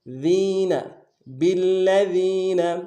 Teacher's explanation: زور دیں گے، اگلے لام کو نون سے ادا کریں گے، ذال کو باریک ادا کرتے ہوئے یا کے ساتھ ملانا ہے، یا مدہ ہے، ایک الف دال میں کھینچیں گے